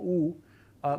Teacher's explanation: it has a high back rounded vowel, for example, u, but it doesn't have a high back unrounded vowel, yeah?